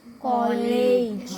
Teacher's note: देखो कॉलेज होता है ना और बोलते क्या हो कॉलेज जहा आ की मात्रा ओ की आवाज निकालती है